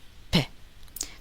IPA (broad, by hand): p